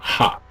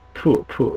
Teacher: 애치음이 아니다. 애치음은 성문음이라 그래요. 하. 피음은 양순음, 입술음, 푸 이렇게 발음하는 거죠.